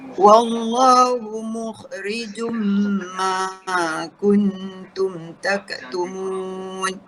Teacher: Hilang bunyi jun, tinggal bunyi jum. Sahaja. Dia terus masuk ke dalam bunyi mim. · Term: idgham